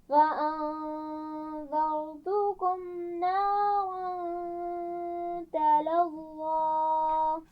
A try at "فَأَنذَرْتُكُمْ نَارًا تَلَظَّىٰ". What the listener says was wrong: فأنذرتكم इसमें कोई आवाज़ खींच कर नहीं पढ़ी जाएगी, ठीक है?